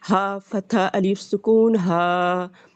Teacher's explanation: اور ہا ہمارا اقصی حلق سے ہے، ہا کے ساتھ الف ہے، ہا فتح الف سکون ہا.